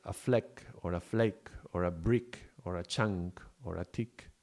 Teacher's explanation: a small explosion and it's at the back of the mouth and it's closing it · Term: K sound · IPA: /k/